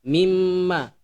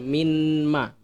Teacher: Nun di sini itu dia tidak kedengaran jadi masuk ke huruf mim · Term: Idgham Bighunnah